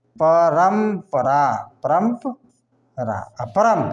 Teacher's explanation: इसमें प वर्ग का अगर आएगा तो उसका उच्चारण म होगा